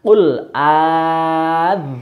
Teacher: tadi membacanya qul adzakaraini. Jadi 6 ketukan atau 6 harokat.